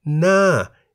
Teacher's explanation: na in the falling tone meaning face